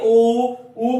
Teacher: हाँ, बोल के देखिए ऊ बोलते हैं, होठ भी लंबे हो जाते हैं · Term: वृत्त